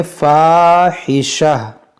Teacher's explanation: اس گولتا کو ہا ساکنہ بنا دیں گے